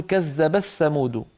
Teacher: قبيلة ثانية تقول كذبت ثمود فتدغم التاء في الثاء وهو أسهل، لا شك أنه أسهل.